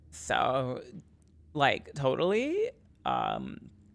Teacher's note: I gotta get my vocal fry going.